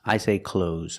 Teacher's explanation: I don't make the th sound when I speak